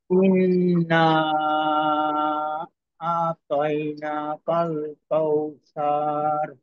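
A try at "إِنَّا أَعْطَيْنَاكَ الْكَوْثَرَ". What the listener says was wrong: হ্যাঁ, সার এইভাবে সাকে লম্বা করা যাবে না, সার।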